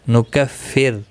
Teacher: رو ساکن زیر کی وجہ سے باریک پڑا جائے گا